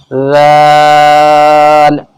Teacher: یہ ذال نکلتا ہے زبان کی نوک جب ہمارے اوپر کے جو دو دانت ہیں ان کے نیچے لگے۔ ذا، یہ سختی کے ساتھ میں پڑھا جائے گا۔